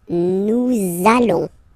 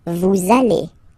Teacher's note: you want to make this beautiful and little liaison, so this little link between the words, so it does mean that you will have to pronounce this z sound